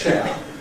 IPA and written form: ʧeə (chair)